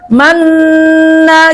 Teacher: Nah, tapi kalau idgam bunah coba nun sukun bertemu dengan nun misalkan nun yang pertama hilang kan bacanya tetap manna gitu ya. Karena nun yang kedua kan punya ghunah makanya dilamain